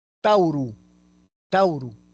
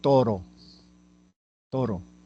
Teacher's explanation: Ahora, eso se llama la diptongación. Ahora, el diptongo au, au, en latín, cambió a O